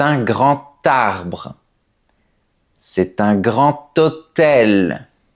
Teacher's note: avec la liaison, la lettre D se prononce comme un T.